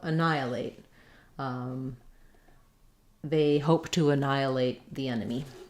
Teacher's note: So we have second syllable stress here. That means letter A is going to be vowel schwa, unstressed. Sounds like And then we have the stress before the nigh syllable.